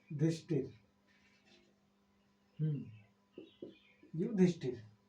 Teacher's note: दंत स के बाद थ आया है। तो दंत स का मुरधा स हो गया और थ का ठ हो गया